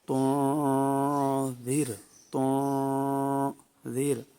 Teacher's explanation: ایک تو یہ را ہے ساکنہ، اس سے پہلے زیر ہے تو را کو باریک پڑھیں گے۔ دوسرا یہ ذال ہے، اس کو نرمی سے پڑھتے ہیں اور اس پر سیٹی جو ہے وہ پیدا نہیں کرتے۔